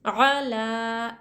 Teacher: حرف مدہ کی طرح کھڑا زبر کو بھی ایک الف کی مقدار کھینچ کر پڑھیں گے